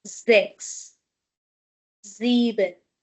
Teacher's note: because after s we have vowel, we will be having z sound for both number six and number seven